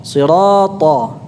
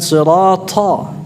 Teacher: ta ini tanpa aliran nafas, bukan sirata.